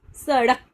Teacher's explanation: और जब भी हम इनका प्रयोग करते हैं तो हमारी जो जीभ होती है ना वो एक थोड़ी सी मुड़ती है। बोलते हुए मूर्धा सी हो के थोड़ी सी ऊपर उठती है और फिर एकदम झटके से नीचे गिरती है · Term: उत्क्षिप्त व्यंजन